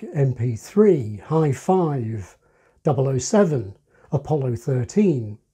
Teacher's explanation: expressions ending in numbers have the main accent on that number